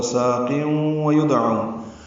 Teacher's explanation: واو ہونٹوں کی نا تمام گلائی سے ادا کریں گے اور غنہ ہوگا اس میں قیوں پڑھتے ہوئے. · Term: ادغام ناقص